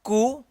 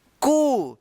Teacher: तो इसका छोटा उच्चारण होगा कु अब यहां पे देखिए क में बड़ी उ की मात्रा लगा है तो इसको क्या उच्चारण करेंगे कु इससे थोड़ा लंबा उच्चारण होगा